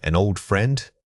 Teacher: The final nasal consonant blends right into the following vowel, almost making it one long drawl.